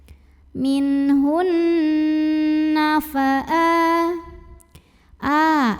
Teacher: nunnya bertasydid maka dibaca dengung bunyi n-nya tahan kurang lebih 2 harokat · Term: hukum mughunnah musyaddadah, gunnah musyaddadah